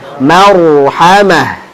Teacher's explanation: Watawasaw bil marhamah. Ra-nya haluskan getarannya. Ya, takrirnya getarannya haluskan.